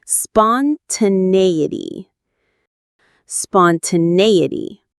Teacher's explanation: The main stress is on the nay syllable.